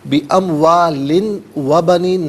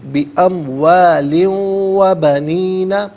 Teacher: یہاں پر ناظرین واو کی آواز کو غننے کے ساتھ ادا کیا جائے گا۔